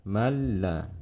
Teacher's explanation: nun mati bertemu dengan lam, ini disebut dengan idghamun bila gunnah